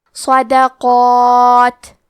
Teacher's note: مد الف میں پیچھے والے حرف کا حکم لیتے ہیں تفخیم میں اور ترقیق میں، تو کیونکہ اس کے پہلے حرف القاف ہے تو ہمیں مد الف کو بھی بھاری آواز میں پڑھنا ہے